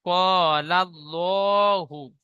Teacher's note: আলিফ মাদ্দা এক আলিফ পরিমাণ টান দিয়ে পড়তে হয়।